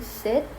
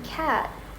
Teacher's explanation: High vowels like e in sit are usually shorter than low vowels like a in cat